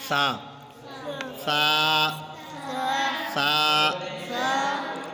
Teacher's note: سا ہمارے پاس حروف لسویہ ہے تجوید کی زبان میں، اور زبان کا سرا اور اوپر کے دانتوں کے اندرونی کنارے سے ادا ہوتا ہے